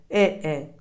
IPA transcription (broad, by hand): ɪ